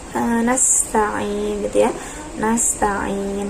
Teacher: Nah, itu langsung ke tasydid ya-nya gitu ya, dinabar. Nasta'in, hati-hati ketika sin sukun itu dijaga ya sifatnya shafir